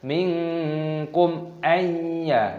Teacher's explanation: nun sukun bertemu dengan ya, idgham bi gunnah dimasukkan dan disertai berdengung.